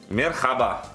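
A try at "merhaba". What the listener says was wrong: Мераба. Мераба. Кстати, в арабском языке тоже присутствует это слово, там читается эта буква х.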